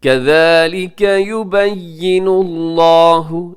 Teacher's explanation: لفظ اللہ کو موٹا پڑھیے گا کیونکہ اس سے پہلے نون کے اوپر پیش ہے